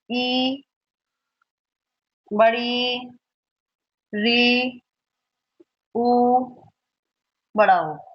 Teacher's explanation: इन वर्णों का उच्चारण करते समय हमारा जो मुख द्वार है वो सबसे कम खुलता है। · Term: संवृत स्वर